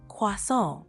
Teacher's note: Try emphasizing the nasal sound at the end a bit more